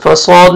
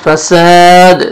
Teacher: سین پڑھیں گے، صاد میں مکس نہیں ہونا چاہیے، فصاد نہیں، فساد، سین، اور الف مد ہے ایک الف کے برابر، یعنی 1 سیکنڈ آپ نے کھینچنا ہے اور دال ساکن ہو جائے گا اور حروف قلقلہ میں سے ڈبل ساؤنڈ آئے گا جب سٹاپ کریں گے، تو فساد۔